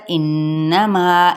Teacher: نون مشدد ہے اس پر غنہ کریں گے ایک الف کے برابر ، انما اسی طرح ایک الف کے برابر اس کو کھینچیں